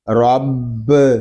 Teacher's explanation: را کے اوپر زبر آ رہا ہے اور با مشدد ہے، اس کو ہم جماؤ کے ساتھ ادا کریں گے کیونکہ با حروف کلکلہ میں سے ہے ، اور جب حروف کلکلہ مشدد ہوں تو ان کو ہم